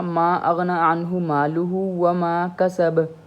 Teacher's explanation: ما اغنی عنہ مالہ وما کسب، کسب ہم پڑھیں گے کسب، لیکن اگر ہم تجوید میں پڑھیں گے، اس کو قلقلہ کریں گے نا، تو وہ ہوگا ما اغنی عنہ مالہ وما کسب. کسب جو با ہے نا، اس کو ہم نے تھوڑا سا نا ابھارنا ہے، اوپر کرنا ہے